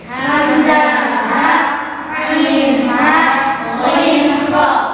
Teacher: jadi hamzah ha paling bawah, ain ha di tengah-tengah, ghain kha paling atas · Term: huruf izhar halqi